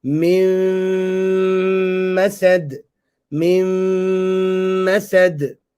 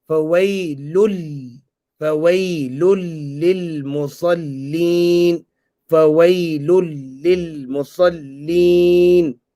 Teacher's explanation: The noon sakina or tanween is merged into the yarmalun letters. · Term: idgham